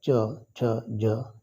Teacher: यांचा उच्चार जीभ आत ओढून टाळूला स्पर्श केल्यात त्यांना तालव्य म्हणला जातो